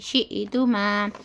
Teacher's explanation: حمزہ ساکنہ میں کیا ہوتا ہے جھٹکا ہوتا